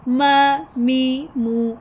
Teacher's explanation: मीम पढ़ते हुए nose में से आवाज़ आएगी, मीम ज़बर मा, मीम ज़ेर मी, मीम पेश मू, मा मी मू।